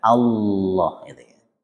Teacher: lafzul jalalah yang berhukum taghlid sehingga lidah bagian belakang harus dinaikkan, diangkat.